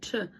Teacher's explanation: You get T R makes a ch sound, ch, as in trees, try.